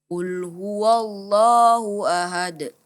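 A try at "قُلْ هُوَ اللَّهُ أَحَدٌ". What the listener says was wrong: Hu ahad. Ya, a-nya dipisahkan dengan h-nya. Hu ahad.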